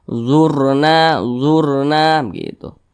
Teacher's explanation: huruf roh sukun. Di belakang huruf roh sukun ini berbaris dhammah, maka huruf rohnya ini dibaca tebal. Dibaca tabkhim.